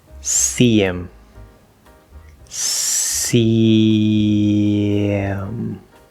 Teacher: So we have an E and then the H and then the I, second vowel sound. And we're dropping that H.